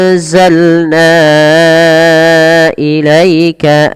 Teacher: Pada lafal na wajib kita panjangkan sepanjang empat atau lima harakat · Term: mad jaiz munfasil